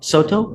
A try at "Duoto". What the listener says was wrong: Duoto, with the D.